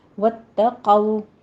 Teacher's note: واتقوا میں تا باریک رکھنا ہے، صرف تشدید ادا کیجیے، سختی کرنی ہے پر اس کو تو نہیں بنانا۔ · قو میں قاف کو پر پڑھتے ہوئے آگے واو لین ادا کریں گے